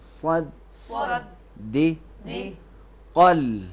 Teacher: دال کو موٹا نہیں کریں گے، فقط صاد کو موٹا پڑھیں گے